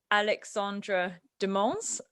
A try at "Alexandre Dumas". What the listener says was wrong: No, but you said Alexandra. Alexander.